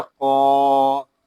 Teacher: یہاں قوف کو ہم پر پڑھیں گے کیونکہ قوف حروف مستعلیہ میں سے ہے اور قوف کو ہم ایک الف تک کھینچ کر بھی پڑھیں گے کیونکہ یہاں الف مدہ ہو رہا ہے.